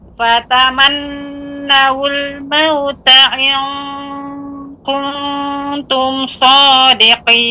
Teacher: Qafnya juga ditebalkan, kemudian bagian pangkal lidah mengenai langit-langit yang lunak, daging yang lunak.